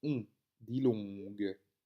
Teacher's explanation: le N est suivi d'une consonne, donc il fonctionne avec le O. Il vient nasaliser le O et donne donc le son on, dilong.